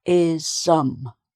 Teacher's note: So the extra vowel sound comes between the S and the M.